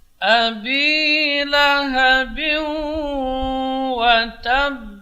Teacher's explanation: Bi sini panjang dua harokat.